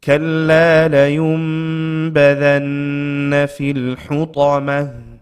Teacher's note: La yum, not la yun with a noon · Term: iqlab